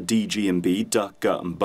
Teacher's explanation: the D, G, and B, D, G, and B, are what we call voiced plosives